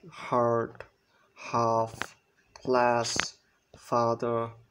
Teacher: লো এবং back vowels লো বলতে বুঝাচ্ছে এটা উচ্চারণ করার সময় আমাদের জিহ্বার উচ্চতাটা উপরে উঠবে না মাঝামাঝিতে থাকবে না এটা নিচে নেমে যাবে জিহ্বাটা নিচে অবস্থান করবে